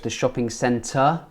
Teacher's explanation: we don't pronounce the 'rs' at the end of the word